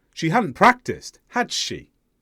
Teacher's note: the stress is on the auxiliary verb had and the intonation went up on had meaning agreement I expect that you're going to agree with me